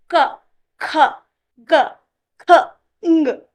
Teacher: when you're sounding ka, it comes to the throat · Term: guttural